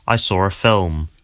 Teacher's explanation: something called the intrusive r that means that people sometimes add an R sound to a word that doesn't actually have one if it's followed by a vowel in the next word